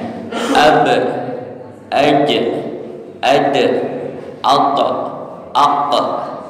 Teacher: ketika mati atau sukun kelima huruf ini ada pantulannya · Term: Qalqalah